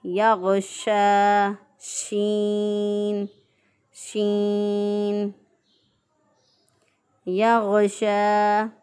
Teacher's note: शीन को हम ज़ुबान का दरमियान जब ऊपर के तारों से लगाएं तो शीन अदा होगा। इसकी अदायगी में आवाज़ जो है वो फैल जाती है, जैसे या गौशा शीन, शीन, या गौशा।